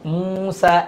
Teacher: মাদের হরফ এক আলিফ টেনে পড়তে হবে